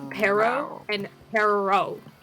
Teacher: I just make the r sound a little bit longer